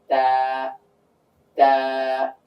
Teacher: তো এই তাটা উচ্চারণ করতে গিয়ে আমাদের জিহ্বার আগাটা উপরের তালুর সঙ্গে চলে যাবে, তালুর সঙ্গে লেগে উচ্চারিত হবে